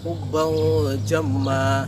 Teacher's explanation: Cara membacanya ialah dengan menyamarkan huruf N yang terdapat pada nun mati tanwin tadi itu di antara huruf N dan NG. Jadi tidak condong ke NG, tidak condong juga ke N, melainkan berada di tengah-tengahnya atau di antaranya. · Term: awsat